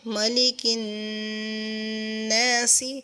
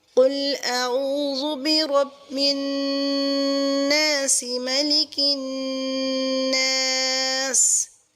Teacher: اگر ہم وقف کرتے ہیں تو ملک الناس یعنی اس جو حرکت ہے اس کو سکون میں چینج کر دیں گے